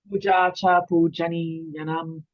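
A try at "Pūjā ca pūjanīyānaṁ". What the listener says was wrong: Again, that came out just. I want you to shorten that Cha. Pu- we shorten one of them. Puja cha. Is puja cha.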